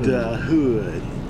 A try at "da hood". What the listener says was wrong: Not the hood, da hood.